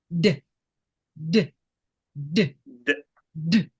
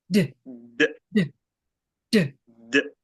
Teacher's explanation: So again, you feel vibration and it's more of a tight release.